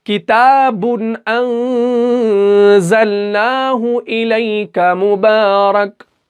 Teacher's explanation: नाक में आवाज को गुन्ना किया, वो इसलिए किया क्योंकि यहां पे नून साकिन के बाद जा आ रहा है और हुरूफ इक्फा का हरफ है, इसलिए यहां पे हमने इक्फा के कायदे को फिट किया।